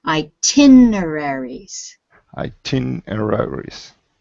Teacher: So now say it faster. The stress is on the tin.